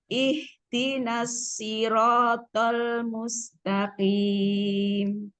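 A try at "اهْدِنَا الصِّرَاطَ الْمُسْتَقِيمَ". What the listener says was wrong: Shotnya kurang jelas, Bu. Ihdinas siratal mustaqim. Tolnya gimana ya? Lamnya kayak kepanjangan gitu. Ihdinas siratal mustaqim.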